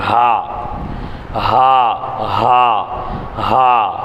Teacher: தொண்டையின் கடைசி பாகத்தில் உச்சரித்தல். ஹா, நல்லா வாயை பொழந்து வச்சு ஹா.